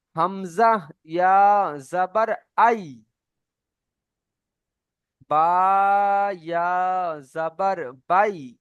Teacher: ইয়া সাকিনের ডান দিকে জাবার আসলে ইয়ালিন। ইয়ালিনকেও ঠিক নরম আওয়াজে তাড়াতাড়ি পড়তে হয়।